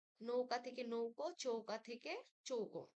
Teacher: পূর্ববর্তী ঔ ধ্বনির প্রভাবে পরবর্তী আ ধ্বনির ও ধ্বনিতে পরিণত হয়েছে